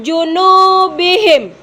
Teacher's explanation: ada nu-nya panjang, hukum bacanya adalah mat tabi'i